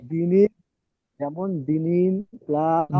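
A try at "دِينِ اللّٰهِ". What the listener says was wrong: দিনিল নয়, ইয়ার মধ্যে একালি টান দিয়ে পড়েন, দি, দালিয়া যে দি, একালি টান দিতে হবে তো।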